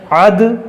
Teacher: دال میں قلقلہ کریں گے